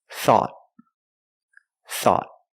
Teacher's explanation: At the end, the tongue goes up and makes a stop T.